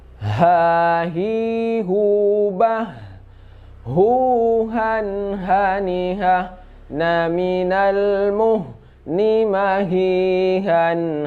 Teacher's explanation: H ini sifatnya hamas. Dia itu keluar juga dari tenggorokan paling bawah.